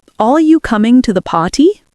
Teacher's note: Gentle fall at the end. · British English often sounds more musical, rising and falling in tone.